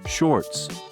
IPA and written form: ʃɔrts (Shorts)